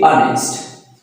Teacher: Here H sound is silent. Here H it's not start from H sound, it start from O sound. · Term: silent letter